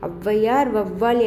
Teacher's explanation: அப்போ ஔ, வௌ அப்படின்னு வரும்போது அது தனக்குரிய மாத்திரையான 2 சரியா முழுமையாக ஒலிக்கிறது. இதுவே ஔவையார், வௌவால் என சொற்களில் முதலில் வரும்போது 2 மாத்திரை அளவில் இருந்து குறைந்து 1.5 மாத்திரை அளவில் ஒலிக்கிறது. இவ்வாறு குறைந்து ஒலிப்பதே ஔகார குறுக்கம் என்று கூறுகிறோம்.